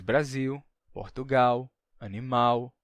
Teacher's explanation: Um exemplo interessante é o L no final de sílaba, que se tornou U no Brasil, né? Então, a gente diz Brasil, Portugal, animal, com o som de U no final.